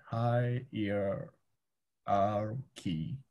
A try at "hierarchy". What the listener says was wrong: It's not ear, it's So, hi. R. Key.